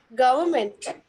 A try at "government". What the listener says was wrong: Okay, so the exact pronunciation would be government. Government. Government. Just skip the R. R is silent. Government.